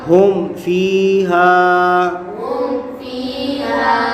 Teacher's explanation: میم ساکن کے بعد فا آ رہا ہے تو یہاں اظہار شفوی ہوگا، یعنی غنہ نہیں کریں گے۔